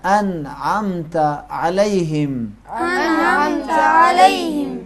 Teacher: انعمت علیہم، بہت زیادہ گاڑا کر بھی نہیں نکالا ہے، یعنی بعض اوقات بعض لوگ حد سے باہر عین کے مخرج کو گاڑا نکالتے ہیں، نہیں، بس حلق کی دیواروں سے معلوم ہو کہ یہ حرف عین تلفظ کر رہا ہے